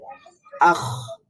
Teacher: এর মাখরাজ কোথায় ছিল জিহ্বার গোড়া উপরের যে নরম প্যালারটা আছে উপরের যে নরম তালুটা আছে সেখানে লাগবে এবং সেখানে একজন এক ধরনের ভাইব্রেশন তৈরি হবে আখ তাহলে এটার সাউন্ডটা কিন্তু বন্ধ হয়ে যাবে না আহ বলেই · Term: খয়ের মাখরাজ